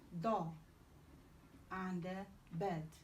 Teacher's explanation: D is alveolar plosive